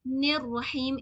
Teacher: نون کو را کے ساتھ ملائیں گے. نر رحیم، ایک بھی وائس اسکپ نہیں ہونی چاہیے. · नून को रा के साथ मिलाएंगे